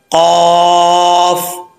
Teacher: आगे कौफ हरूफ मुस्तालिया में से है, इसको पुर पढ़ेंगे, इसका मखराज है ज़ुबान, ज़ुबान की जड़ ऊपर वाले तालू के नरम हिस्से से लगे तो कौफ पढ़ा जाता है